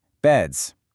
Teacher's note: If a word ends with a voiceless sound, like the P in cap, that's just air, it makes a sharp S sound, caps. But if it ends with a voiced sound, where your vocal cords vibrate, like the D in bed, you get a buzzing Z sound, beds. And for those hissy sounds, we add a whole extra syllable, is, like in horses.